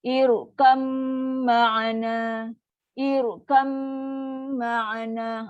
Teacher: dia ada dengung yang paling sempurna, paling panjang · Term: dengung yang sempurna